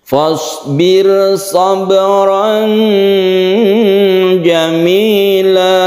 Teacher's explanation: hati-hati di sini ada ro yang tipis, ro tarqiq ya. Kemudian ada qalqalah sughra.